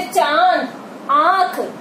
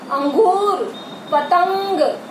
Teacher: जो चंद्र बिंदु लगा होता है ये अनुनासिक कहलाता है। जैसे चांद, आंख, तो इसमें जो है ज्यादा जोर नहीं पड़ता। अनुस्वार जब हम बोलते हैं तो उसमें ज्यादा जोर लगता है। अंगूर, पतंग, तो और इसमें जो हमारी जो ये अनुनासिक शब्द होते हैं, अनुनासिक वर्ण होते हैं, ये जो है इनको बोलते समय ज्यादा जोर नहीं लगता।